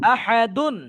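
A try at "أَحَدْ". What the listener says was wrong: আহাদুন হবে না আহাদ ওটা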